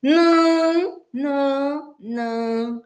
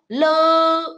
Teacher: 呢，这两个音到底有什么区别呢？好，我们来看一下呢了有什么区别呢？好，一个呢应该是什么样？呢其实是鼻音，所以在念呢的时候，就是生气的恐龙啊，呢。好，这时候呢，我们要请孩子先怎么样？先摸大人的鼻子。呢，有震动了哈，然后呢，再请孩子摸摸自己的鼻子。你念呢的时候呢，如果他还不能体会，你可以加怎样？吼，生气，哼哼哼，这样子擤鼻涕，感觉这个气呢是从鼻子跑出来的这样的感觉。念呢呢呢，好。那么念了的时候跟呢有什么不一样呢？ 了的时候呢，除了你的舌尖要往上之外呢，空气是从嘴巴出来的。